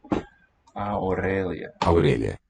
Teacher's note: There's another palatal L for us.